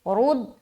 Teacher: رد، را کو موٹا رکھیں گے